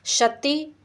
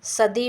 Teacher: शती बदला सदी में। ता जो है वह प्रत्येक वर्ग का ये खर प्रत्याहार में आएगा ता। तो ये इसका घोषीकरण हो गया, तो ये दा में परिवर्तित हो गया। दा वर्ग का तृतीय वर्ण है, यानी ये घोष है।